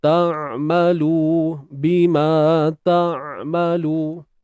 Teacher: Ta'malu huruf ain. Sempitkan tengah kerongkong.